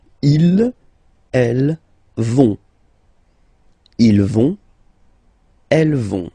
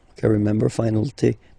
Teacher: remember, final T not pronounced, so you get this ON nasal here.